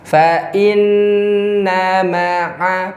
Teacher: Dalam nun yang disertai shaddah, ada ghunnah. Ghunnah. Tahan selama tiga hitungan.